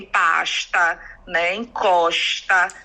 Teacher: O chiado, que é muitas vezes atribuído ao carioca, mas que também acontece com muita força aqui em Salvador